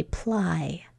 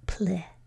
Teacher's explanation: The second syllable, P-L-I, is an open syllable, so we would expect it to say ply. But we schwa'd it. We made it say its short I sound of pli.